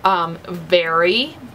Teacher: English V is voiced F